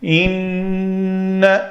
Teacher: نون مشدد جب بھی ہو اس کے اوپر غنہ کرنا ہے اور دو حرکت کے برابر اس کے اوپر ٹائم دے کے حرکت ادا کر کے آگے چلنا ہے۔